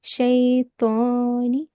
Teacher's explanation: It's not ta. It's to. So you have to make a little rounded sound.